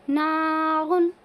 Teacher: इस तनवीन की आवाज़ को ज़ाहिर करके पढ़ेंगे